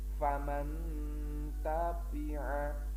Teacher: N-nya, nun-nya dibaca samar-samar, tidak begitu jelas. Contoh, di sini ada nun mati bertemu huruf ta, maka cara membacanya n-nya dibaca samar. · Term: ikfa hakiki